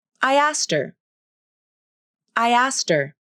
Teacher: That means the pronoun can also be reduced. The initial H consonant can be dropped, and her can be pronounced as I asked her.